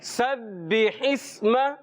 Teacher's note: ہا حلق کے درمیان والے حصے سے ادا ہوتا ہے · با حرف قلقلہ سے مشدد ہے، تھوڑا سا جماؤ کے ساتھ رک کر ادا کریں گے · سین اور صاد یہ سیٹی والے حرف ہیں، زا بھی سیٹی والا ہے، مگر سب سے زیادہ سین میں سیٹی آتی ہے. تو ان کو سیٹی کے ساتھ حرف کو ادا کریں گے.